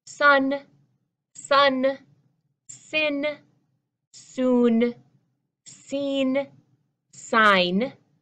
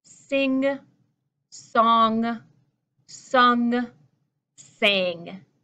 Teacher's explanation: Because the group of 4 on the bottom have that NG, that ng, ng sound, which is made up near the back of your mouth. The 6 across the top row have just the simple N sound at the end, the N sound at the end.